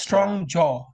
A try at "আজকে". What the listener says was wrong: হ্যাঁ, স্ট্রং বর্গীয় জ, আজকে।